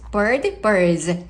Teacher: 이렇게 ds는 소리가 즈 소리를 바뀌어요. 드스 하시면 안 돼요.